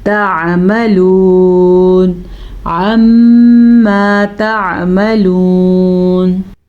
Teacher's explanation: میم کا غنہ ادا کر لیں کیونکہ میم کے اوپر شد ہے